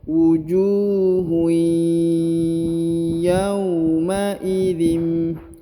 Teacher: Jadi wujuhui ditahan, ditekan, didengungkan dan dileburkan ke huruf ya. Wujuhui, huruf ju perhatikan dibaca 2 harokat ya, harus karena di depannya terdapat waw sukun